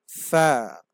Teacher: ফা উচ্চারণের সময় সামনের উপরে দুইটা দাঁত ঠোঁটের সাথে লাগবে